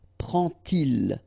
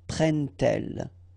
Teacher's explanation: you won't pronounce it like d to make the liaison, but you will pronounce it like t.